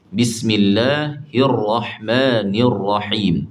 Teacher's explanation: sembunyikan sikitlah bunyi getaran ra tu. Takrir tu getaran. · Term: sifat takrir